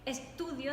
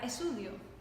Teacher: no decía las T's, en vez de decir estudio decía esudio, y para ella era absolutamente normal.